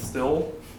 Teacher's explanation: a laxing of the I before L so steel becomes still